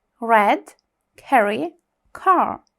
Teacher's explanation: Буква Р. Звук р майже не звучить.